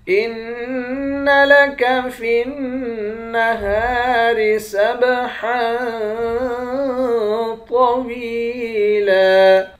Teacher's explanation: ہا کے بعد الف ہے. الف حرف مدہ ہے. حرف مدہ کو ایک الف کے مقدار کھینچ کر پڑھتے ہیں.